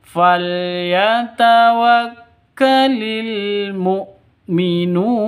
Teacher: Nun panjang boleh 2 ketukan, boleh 4 ketukan, boleh 6 ketukan atau 6 harokat. Jadi mad arid li sukun.